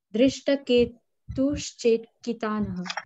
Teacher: विसर्गों को हम, विसर्ग के जगह हमने तालव्य श लगा दिया, दृष्टकेतुश्चेकितानः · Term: विसर्ग संधि